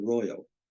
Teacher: A good example is the word royal. We don't say royal with a strong Y sound like the Y in yes. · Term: semivocalic I